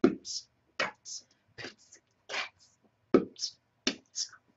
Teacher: And of course, if you get a microphone nice and close, the explosions coming off the lips and that coming from the tongue starts to create those fabulous rap sounds